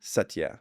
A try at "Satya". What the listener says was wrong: Yeah, you have like the basic pronunciation right. It's just it can be softer. Because if you go Satya, then it's like really emphasizing the first kind of. So it can just be softer, like Satya.